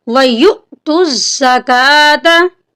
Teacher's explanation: یہاں پر یا کے ساتھ حمزہ ہے، حمزہ کے اوپر ساکن ہے، تو یہاں پر ہم اس کو ہلکا سا جھٹکا دے کر پڑھیں گے.